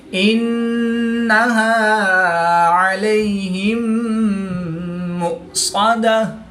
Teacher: صاد حروف مستعلیہ میں سے ہے تو اس کو پر یعنی موٹا پڑھیں گے. · میم ساکن کے بعد دوسری میم ہے تو یہاں پر ادغام شفوی ہوگا یعنی غنہ کر کے پڑھیں گے. حمزہ ساکن ہے تو اس کو جھٹکا دے کر پڑھیں گے.